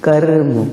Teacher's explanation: कर्म में क जो है लघु मात्रिक है, लेकिन जो र है वो का के साथ जा रहा है।